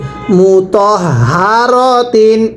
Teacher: এখানে হাটা উচ্চারণের সময় গলার মধ্যে আওয়াজ করে পড়তে হবে, মু তহ হা র তিন, এরকমভাবে পড়তে হবে।